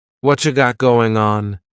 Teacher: Whatcha is what plus you. You becomes cha.